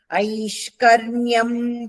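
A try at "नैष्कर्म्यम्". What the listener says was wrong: ನೈಷ್ಕರ್ಯಂ ಚೊನೆ ತಾನೆ, ನೈಷ್ಕರ್ಮ್ಯ ತಾನೆ ಹೇಳಿದೆ. ಐ ತಪ್ಪು, ನೈಷ್ಕರ್ಮ್ಯ ಅದು. ಅನಾರಂಭಾತ್ ನೈಷ್ಕರ್ಮ್ಯಂ. ಅನಾರಂಭಾತ್ ನೈಷ್ಕರ್ಮ್ಯಂ ಸಂಧಿ ಆದ್ರೆ 4 ಬರುತ್ತೆ.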